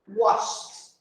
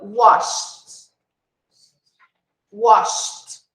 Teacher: Você tem que pular do som do SH direto para o som do T. Não tem nem o E e nem o D. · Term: som de T